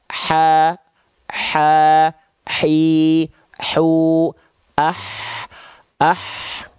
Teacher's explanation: dia tepat dilafalkan dari bagian tengah tenggorokan kita · teman-teman sekalian ya hams itu artinya adalah mengalir nafas nah karakteristik nafas yang mengalir dari huruf H kecil ya adalah seperti kita berbisik